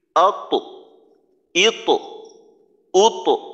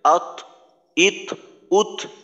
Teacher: ত এর প্রথম সিফত কিন্তু জাহার, বাতাস বন্ধ। তো তার জজম দিয়ে উচ্চারণ করার সময় দেখা যায় আমাদের অনেক সময় আত, ইত, উত এভাবে বাতাস বের করে ফেলি।